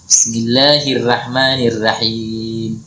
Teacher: kalau orang Makassar itu kalau baca Al-Qur'an biasanya huruf ro-nya selalu tipis